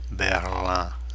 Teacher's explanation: Notice that I-N nasal. Berlin. It's not Berlin, it's Berlin en français.